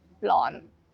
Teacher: if the R is at the start, for example, in the word rack or rot or then we change it into the L